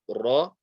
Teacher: So we won't say ra, we will say ra, and it's a vibration of the tongue